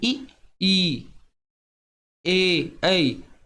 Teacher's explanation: उसी प्रकार से हम ई, ए, जब हम ऐसा बोलते हैं तो जीभ का जो आगे वाला हिस्सा होता है वो आगे को आता है